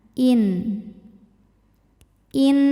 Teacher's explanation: nun sukun dibaca dengan jelas izhar jadi bunyinya bunyi n ya dan tidak kita tahan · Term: izhar halqi